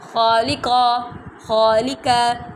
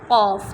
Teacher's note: اب لام باریک رکھی ہے میں نے، قاف موٹا رکھا ہے